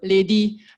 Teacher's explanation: the R sound will sometimes sound like L, so like, ready will become leddy